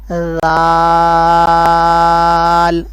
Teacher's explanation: اپنی زبان کی نوک اور اوپر والے دانتوں کو کناروں کو آپس میں ملا کر پڑھنا ہے